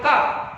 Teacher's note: का उच्चारण करते समय कंठ से, तो ये कंठ से बोला गया है।